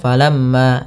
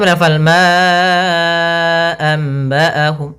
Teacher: lafal mim tasydid ini ada hukum tjid berupa bacaan ghunah yaitu kita menahan suara mnya sepanjang dua harakat atau hampir mendekati tiga ya falamma jangan langsung falamma ya tapi tahan dulu kemudian falmaambaahum